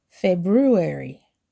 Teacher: It's 4 syllables with a stress on the first syllable.